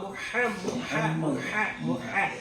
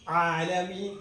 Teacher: ഹാ വരുമ്പോൾ കാറ്റ് വരും അയിന് വരുമ്പോൾ എന്ത് വരത്തില്ല കാറ്റ് വരത്തില്ല പതുങ്ങി വരും